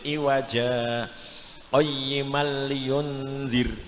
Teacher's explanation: bacaan saktah, berhenti sejenak, sekadar 1 alif tanpa bernafas ya. Kalau bernafas namanya waqaf.